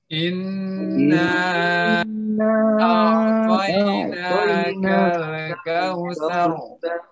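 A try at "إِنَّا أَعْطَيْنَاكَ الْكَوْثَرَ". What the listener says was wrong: Nah, hati-hati di lam sini jangan dikol-kolahin. Inna a'tainakal kautsar. Ro-nya tebal ya, bukan ser gitu saja, tapi ser. Inna a'tainakal kautsar.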